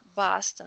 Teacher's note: Boston. São de O com a boca aberta.